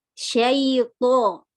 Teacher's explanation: To di sini paling sering kesalahan adalah menipisnya mahrot, padahal sifatnya isti'la dan itu bako. Jadi lebih tebal. Syaito. Di antara huruf hizaya yang paling kuat adalah huruf to.